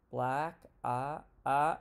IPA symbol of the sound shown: æ